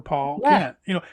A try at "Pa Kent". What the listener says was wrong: Pa Kent, not Paul. You're saying Paul?